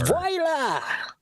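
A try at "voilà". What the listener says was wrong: Did you actually pronounce v o i as voy?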